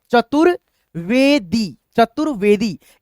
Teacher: रेफ की मात्रा का उच्चारण त के बाद व से पहले